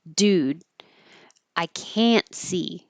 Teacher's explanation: this negative can't will sound like a positive can because you won't hear the T, but your tongue still goes to the T position.